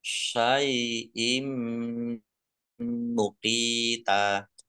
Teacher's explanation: Ditandai mimnya ada tasdidnya. Mim tasdid dibaca gunnah atau mendengung ditahan 2 harokat biar tampak dengungannya.